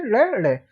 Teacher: जैसे क्या होता है, हम फोन चलाते हैं, फोन को किसी ऐप से टच करते हैं तो एकदम हट जाता है और एकदम खुल जाता है वो, इसी प्रकार से याद रख सकते हैं आप, नोक, जीभ की नोक तालु को स्पर्श करके तुरंत हट जाती है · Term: उत्क्षिप्त व्यंजन